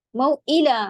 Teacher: موئلا حمزہ کی آواز اچھے سے الگ رکھنا ہے